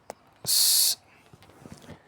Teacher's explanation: It is a voiceless central alveolar fricative. It is pronounced by the vocal cords do not vibrate.